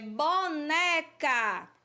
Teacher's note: a sílaba né a gente pronuncia com mais tonicidade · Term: paroxítona